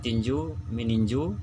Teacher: Me tambah tinju, meninju, jadi T-nya tidak disebutkan.